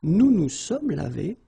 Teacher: final S is not pronounced